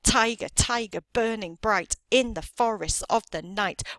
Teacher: I can see that it's coming in pairs now and I've got a stress syllable and then an unstressed syllable